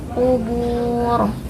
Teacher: Ada mad tabi'i bertemu huruf yang disukunkan karena waqaf, panjang 2, 4 atau 6 harokat. Huruf ro-nya dibaca tafhim atau tebal karena sebelumnya ada harokat dhamma.